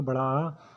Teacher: जिसके बोलते समय मुख पूरा खुलता है, हमारा मुंह पूरा खुल जाता है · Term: विवर्त स्वर